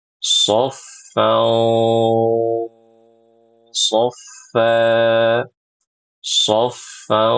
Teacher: karena huruf-huruf ini tebal, suara ikhfanya dan suara ghunahnya pun ikut tebal